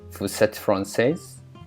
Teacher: using a rising intonation at the end of the sentence